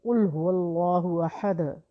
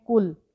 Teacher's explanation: یعنی کہ ہم قاف کو جب اس کے مخرج سے نہیں نکالتے ہیں تو ہم پڑھتے ہیں کل